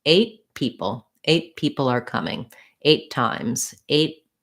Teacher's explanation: say eight people that's where i'm gonna use that stopped t i'm not gonna say eight people with a clear t and a break between the two · I'm not going to say 8 people with a clear T and a break between the two. I'm going to just go up to make that T and then release right into the P of people.